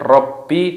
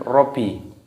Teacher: Bedakan dengan rabbi dengan robi. Di sini terdapat tasdid, harus dimasukkan